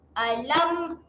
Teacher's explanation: Jangan dengungkan dekat sini Alam. Rapat saja bibir.